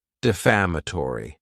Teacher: this word has 5 syllables, and the stress is on that second syllable, Defamatory.